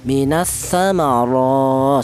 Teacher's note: huruf ra ini berharokat fathah, ini dibaca tafkhim ya, ra dibaca tebal. Kemudian di atas ra ini berharokat berdiri, di samping dibaca tafkhim juga dibaca matobi'i atau panjang ya, minas samara, seperti itu tadi sudah kita bahas.